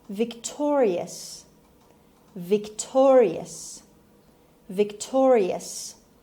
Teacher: It has 4 syllables and the stress is on T sound. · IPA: /vɪkˈtɔːriəs/